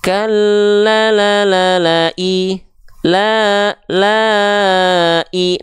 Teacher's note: 4 harokat itu seperti 4 ketuk atau kadar 4 kali melafalkan la-nya.